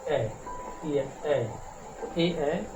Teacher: कंठ और तालु से जो बोला जाता है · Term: कंठ तालु